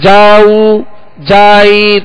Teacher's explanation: جیم جو زبر ہے وہ کھینچ جاتا ہے، دراز ہو جاتا ہے